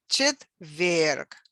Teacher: there was a stress on the second syllable on the last syllable